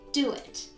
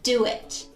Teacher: can you hear that intruding w sound between do and it's do ends in the u sound and it begins with a vowel so we have an intruding w sound